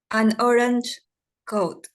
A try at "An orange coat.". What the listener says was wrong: remember what I said. Don't separate the syllable. And orange. Lean the sound. An orange. You know, it sounds better. If you say an orange, no, an orange coat. It sounds better.